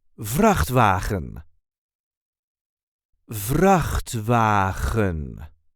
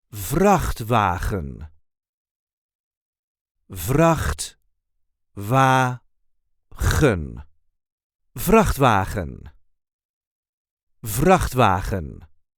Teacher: There is a light emphasis on the first syllable.